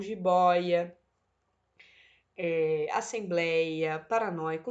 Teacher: na sílaba que seria paroxítona existe um ditongo aberto